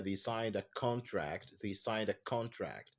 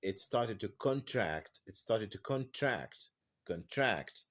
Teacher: contract as a noun the stress falls on the first syllable